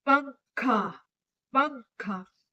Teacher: जब हम बोल रहे हैं तो इसमें हमारे नाक में थोड़ा हवा भर जा रही है। यहां पे थोड़ा सा फूल जा रहा है।